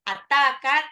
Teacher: taknya itu mat tabi'i ya, 2 harokat